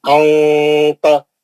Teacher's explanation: नून की आवाज से छुपा के इख्फा करेंगे आप।